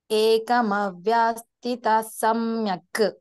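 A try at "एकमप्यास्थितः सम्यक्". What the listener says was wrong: కరెక్టే, కానీ వా లేదు, అది పా పా పా అనండి. ఏకమప్య.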